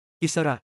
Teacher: อิสระ meaning freedom lets go of its T sound.